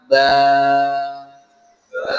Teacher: Kita panjangkan suara ba. Ba ya. Maka muncul alif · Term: mad